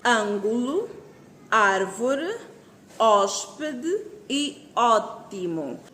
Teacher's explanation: percebeu que todas as palavras são acentuadas na antepenúltima sílaba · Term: proparoxítonas